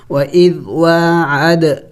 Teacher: واو کے اوپر کڑی زبر ہے، کڑی زبر کڑی زیر الٹا پیش کو ایک الف کی مقدار کھینچنا ہوتا ہے۔ وَإِذْ وَاعَد، عد دیکھیں دال بھی حروف قلقلہ میں سے ہے اور ساکن ہے تو قلقلہ کریں گے یعنی ہلا کے پڑھیں گے۔